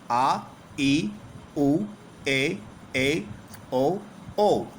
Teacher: इन स्वरों के उच्चारण में ह्रस्व स्वर से दुगना यानी 2 मात्राओं के बराबर का समय लगता है। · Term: दीर्घ स्वर